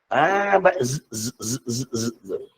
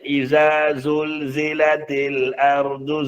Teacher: Bahagian gigi yang bawah tu desiran dia berlaku. As belah bawah.